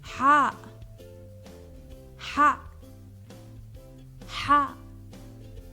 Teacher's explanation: Similar to the English letter H, but stronger and more from the mid-throat